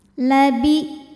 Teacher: hamzahnya punya sifat namanya syiddah, jadi suaranya tertahan ya, kuat. Sandaran terhadap makhrajnya kuat, jadi semakin kita tekan semakin tertahan.